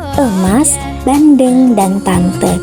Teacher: Kelima adalah vokal E dengan proses pembentukan tengah atas, pusat, tak bundar